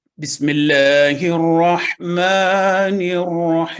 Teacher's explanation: الرحیم کو ملا کر پڑھتے وقت حمزۃ الوصل کو تلاوت میں شامل نہیں کرتے اور نون کو را کے ساتھ ملا کر پڑھا جاتا ہے